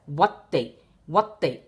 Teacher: you're immediately shortening the wa, the long fatha sound to a short sound, like fatha. So watte. See, so this become, you have to read it as watte.